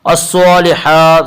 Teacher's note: الصالحات صاد کے اوپر کھڑا زبر ہے، کھڑا زبر کو ایک الف کے برابر کھینچ کر پڑھیں گے